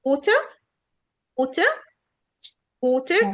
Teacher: شايفين ان ال A هنا جاية O وال ER هنا ما بتتنطق water، اللي هي شوا اللي خدناها من شوية.